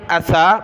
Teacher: یہ سا پر زبان نکالی